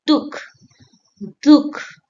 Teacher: Can you feel the little breath after dukh? Dukh, dukh, like namah, namah. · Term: visarga